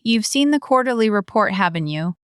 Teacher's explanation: Voice falling. She knows he has, she's just opening a topic.